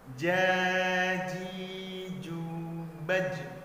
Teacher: di sini huruf jim dipantulkan dikarenakan bahagian dari huruf qalqalah